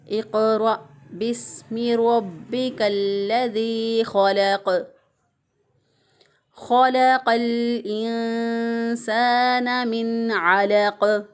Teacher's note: क़ाफ जो है वो वक़फ़ की सूरत में साकिन हो जाएगा, तो साकिन हालत में क़ाफ पर फिर कलकला होगा। हम क़ाफ को हिला कर पढ़ेंगे। आवाज़ जो है वो बाद में भी जारी रहेगी, हरफ की अदायगी के बाद भी जारी रहेगी।